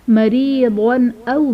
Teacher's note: مریضن او میں ضاد پر 2 زبر کی تنوین، تنوین کے بعد حروف حلقی میں سے حمزہ آ رہا ہے تو یہاں پر اظہار کا قاعدہ ہوگا، یعنی تنوین میں غنہ نہیں کریں گے